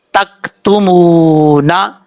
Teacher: میم کے بعد واو ہے، واو مدہ، ایک الف کی مقدار لمبا کر کے پڑھیں گے